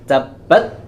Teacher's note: Antara syiddah dan hams, kedua sifat ini tidak bisa berjalan bersamaan, tapi harus antri. Syiddahnya terlebih dahulu, baru kemudian hams. Tabbat, bat, tidak boleh tabbat yada.